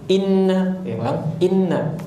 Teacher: bukan enna, nggak boleh. Enna, inna langsung masuk ke nun tasydid. Tadi seperti menambah ya sukun, jadi bukan inna, itu ada ya sukun kalau gitu.